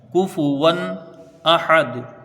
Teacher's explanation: پائے، کفوا احد، واو کے اوپر دو زبر کی تنوین ہے، تنوین کے بعد حروف ہلکی کا حمزہ ہے، یہاں اظہار ہلکی ہوگا، یعنی بغیر غنہ کے جلدی پڑھا جائے گا ، حمزہ کو جلدی پڑھیں گے، ہا کو بھی جلدی پڑھیں